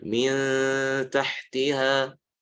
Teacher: huruf ta keluar dari ujung lidah bertemu dengan langit-langit, ya, bertemu dengan pangkal gigi seri, dan sifatnya adalah istifal atau tipis, maka ikhfanya atau dengungnya juga seperti itu.